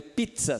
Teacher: a junção de um oclusivo com fricativo e só que é falado ao mesmo tempo então a gente chama de africado homo orgânico ja é do